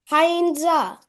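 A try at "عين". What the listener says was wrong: Ha, it's not Hain, it's Ain. it's not Ha. The middle one is not Ha. There are three letters.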